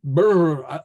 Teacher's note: it's a bilabial trill